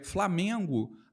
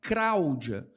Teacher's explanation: O rotacismo de que ela fala é nos encontros consonantais, de, por exemplo, PL, CL e FL. Então, onde se fala Flamengo, há variantes no Brasil que falam Framengo.